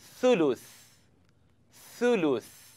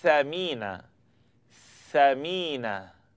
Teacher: So all you're doing here is blowing the air between your tongue and the edge of the top teeth